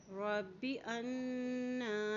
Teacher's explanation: نون کے پر کھڑی زبر ہے اس لیے اس کو ایک حرکت لمبا بھی ادا کریں گے